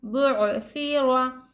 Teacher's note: یہاں پر را پر حرکت زبر ہے، را کو ہم موٹا پڑھیں گے، پور پڑھیں گے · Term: را پور